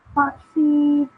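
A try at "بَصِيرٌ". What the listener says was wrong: So make the sad a bit thicker. Basirun.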